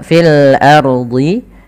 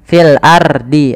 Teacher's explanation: Kemudian pada lafal fil ardi, ro-nya di sini ro tebal, fil ardi. Kemudian jangan sampai kita membaca dengan fil ardi, ro-nya tipis.